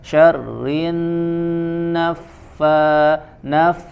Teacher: ziyadatul gunnah ditahan agak dilamakan dengungnya, tidak tergesa-gesa